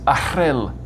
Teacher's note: Another cool Welsh sound is r, which is spelt RH. It's a rolled r, but without the voicing. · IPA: [r̥], /əˈr̥ɨl/